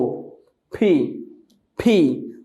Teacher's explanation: দুই ঠোঁট বন্ধ করে একটা বাতাস বের হবে, এটাকে বলে অ্যাসপাইরেটেড সাউন্ড।